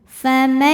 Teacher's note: Kemudian ada idgham bi gunnah karena ada nun sukun menghadapi ya, maka nun masuk ke ya disertai dengung.